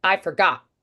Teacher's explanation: they use the vocal folds to do a glottal stop.